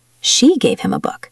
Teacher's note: If I stress she, it means she was the one who gave it, not someone else.